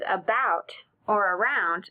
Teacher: In the words about or around, the first syllable is not stressed. It's not accented, and the letter A sounds like a short U, which is a very common sound for a schwa sound.